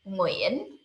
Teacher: Uyên, and this is the most common last name in Vietnamese. Nguyễn, with the wave tone, with down and up